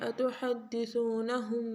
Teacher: قَالُوا أَتُحَدِّثُونَهُمْ، اس قاف کو موٹا پڑھیں گے، أَتُحَدِّثُونَهُمْ، ہم کے اوپر غنہ کریں گے